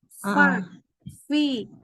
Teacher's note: Jadi mulai sekarang fa itu memang dia harus benar-benar hembus. Fa, fi. Makanya nafasnya lebih habis daripada sebelumnya.